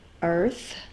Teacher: My tongue is out. I'm blowing air. My voice is off.